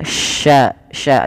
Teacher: Sya yang di mana dia punya sifat tafasyi intisyarusuti fil fam yaitu menyebarnya suara di dalam mulut